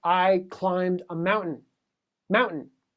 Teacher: in a standard American accent, there's actually no t sound there. This is a stop.